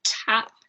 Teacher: in English we have post aspiration in words like tap